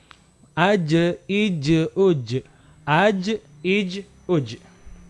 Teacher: Karena jim ini termasuk huruf kolkolah. Maka harus dikolkolahkan atau dipantulkan suara jimnya ketika dia berharokat sukun